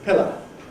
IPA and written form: ˈpɪlə (pillow)